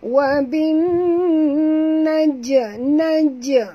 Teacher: Bin alif lam syamsiah ataupun idgham syamsiah, masukkan bunyi ba terus ke dalam nun disertai dengung dua harakat ya. Di sini ialah idgham syamsiah, di atas nun ada tasydid, maka kita kena dengung ya. · huruf jim di sini apabila dia mati di tengah-tengah kalimah kita kena lantunkan dia ya, qalqalah sughra.